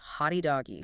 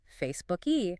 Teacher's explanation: The brain sends an involuntary signal to the vocal cords to keep vibrating just a millisecond longer, creating an E or an oo sound.